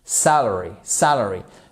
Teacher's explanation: Parce que vous voyez votre apostrophe ici qui nous indique que c'est la première syllabe qui est accentué